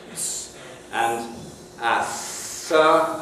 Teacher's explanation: we have a frickative sound so here you have S and a and you can probably hear the friction